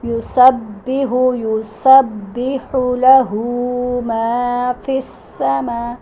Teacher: سین کی آواز نکالیں گے، سین سیٹی کی آواز میں